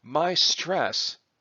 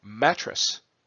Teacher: So in rhyme, typically it's not just that the word ending sounds have to match, but typically the stresses need to match also. So my stress is a phrase that has both syllables stressed, whereas mattress is a word that has just the first mat syllable stressed, whereas tress does not.